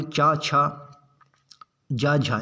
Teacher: पूरा चा वर्ग आपका तालव्य होता है